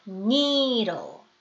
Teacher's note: 혀끝이 순간적으로 치경이 닫고 끝나셔야 돼요.